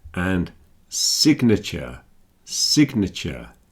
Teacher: Signal and signature, you can hear the G, but sign, you do not hear the G.